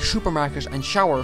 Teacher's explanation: A lot of the time you'll notice that S becomes SH in words like supermarket and shower